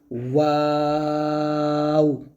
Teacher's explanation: যেমন ওয়াও, ওয়াও উচ্চারণ করার সময় প্রথমে ঠোঁট গোল হবে, আবার শেষে গিয়েও ঠোঁট গোল করে শেষ করতে হবে